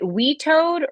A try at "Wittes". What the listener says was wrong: No, not we. You don't pronounce my name Wheatus. It's Witoad.